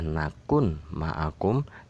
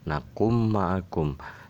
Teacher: Tulisan aslinya adalah nakun ma'akum dan dibaca nakum ma'akum, sehingga nun mati ini dibaca menjadi mim, nakum ma'akum.